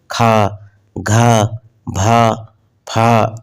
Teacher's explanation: वे व्यंजन जिनके उच्चारण में अधिक वायु बाहर निकलती है और ह जैसी ध्वनि स्पष्ट सुनाई देती है · तो इसमें हम देखेंगे कि हमारे लास्ट में ह करके ध्वनि आ रही है। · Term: महाप्राण